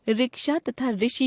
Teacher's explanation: हिंदी भाषा भाषी इसका उच्चारण र जमा इ ऋ के रूप में करने लगे और आज यही हिंदी का मानक उच्चारण बन गया है। हिंदी में रिक्शा तथा ऋषि शब्दों की पहली ध्वनि के उच्चारण में कोई अंतर नहीं रह गया है। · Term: ऋ स्वर